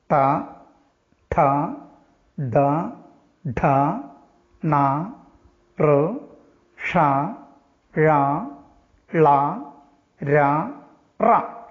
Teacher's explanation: മൂർധാവ് ഉച്ചാരണ സ്ഥാനമായ വർണ്ണങ്ങളെയാണ് മൂർധന്യങ്ങൾ എന്ന് പറയുന്നത്